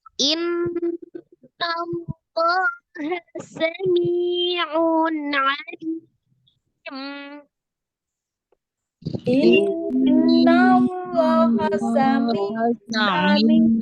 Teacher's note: Inna ada nun tasdid, wajib ghunna ya. Ghunna akmal matakun.